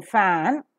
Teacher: is coming out in the lungs passes with an audible friction the vocal cords are drawn apart during the articulation of the sound · the lower lip comes very close to the upper teeth to form a narrow space through which the air that is coming out in the lungs passes with an audible friction · that's right for the articulation of the sound as in fan the soft palate is raised to shut off the nasal passage of air the lower lip comes very close to the upper teeth to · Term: voiceless